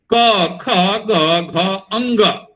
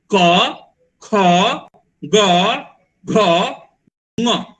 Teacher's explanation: जहां से आप क बोल रहे हैं वहीं से एक अनुनासिक शब्द, अनुनासिक का जो अंतिम वर्ण है वो नाक से थोड़ा सा आता है, और वो उसके लिए क्या करना होता है, नाक का भी उच्चारण करना पड़ता है, नाक का भी उच्चारण करना पड़ता है, और नाक से भी उच्चारण करना पड़ता है, और हो जाता है क ख ग घ ङ।